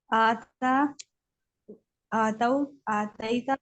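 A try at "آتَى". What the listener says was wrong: नहीं, हाँ, आता से तो जो है वो तीन अरफी वाले का होता है, ये है आता। और ता दोनों पे खड़ी जबर है, तो ये खींचेगा।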